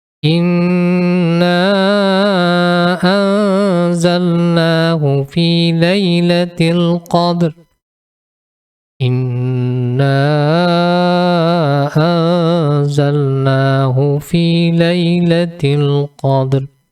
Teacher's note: nun sukun dan huruf dza di samar-samar disertai dengan mendengung ditahan sepanjang dua ketukan atau dua harakat